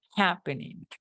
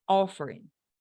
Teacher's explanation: Porque en los anteriores, en los que eran dos sílabas y terminaban en consonante, vocal, consonante, ahí deberíamos hacer un énfasis en la primera sílaba